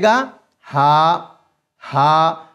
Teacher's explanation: हलक के शुरू वाले हिस्से से यानी कि जो सीने की तरफ हमारा हिस्सा है ये वहां से अदा हो जाएगा